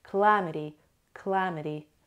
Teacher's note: Stress is on the second syllable.